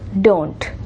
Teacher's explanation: this diphthong, don't, O, becomes a monophthong, a single word, a single sound.